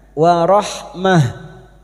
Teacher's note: Tak marbuto yang dibaca waqaf. Maka bunyinya warahmah.